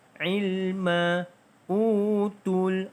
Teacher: Utul alif lam qamariyah dibaca dengan bunyikan lam.